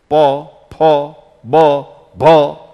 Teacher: ઓઠ ભેળા થઈને નોખા પડે એમ એટલે એને ઓષ્ઠ્ય કહેવાય